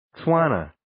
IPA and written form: 'tswɑːnə (Tswana)